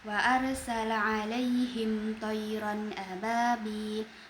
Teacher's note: Mim sukun bertemu dengan huruf th. Maka hukum tajwidnya izhar syafawi mim dibaca dengan jelas. Lalu pada bagian thirron ababil huruf ro berharakat fathatain bertemu dengan huruf alif maka hukum tajwidnya izhar halqi.